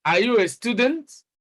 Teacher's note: That's a rising tune, and it's a yes or no question.